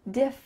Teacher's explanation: Diff with a clear F sound. Your top teeth are on your bottom lip. Diff. And then we have rin.